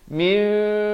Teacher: Di sini hukum iqlab. Asalnya min ditukarkan kepada bunyi mim. Tapi jangan lupa panjangkan 2 harakat. Bibir itu sekadar bersentuhan.